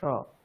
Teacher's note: এটা সংস্কৃত তালব্য সকার